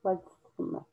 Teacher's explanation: Rather than a T sound, sometimes it has a D sound.